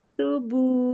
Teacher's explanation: تبو کو لمبا نہیں کرنا، الف نہیں پڑھنا